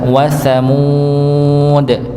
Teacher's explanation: Huruf tha tempatnya di ujung lidah. Ujung lidah bertemu dengan ujung gigi seri atas.